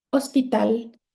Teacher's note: It is an aguda because my stressed syllable is the last one